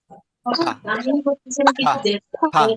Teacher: যখন ফি উচ্চারণ করবে তখন উপরের ঠোঁট এন্ড নিচের ঠোঁট দুটো টাচ করবে।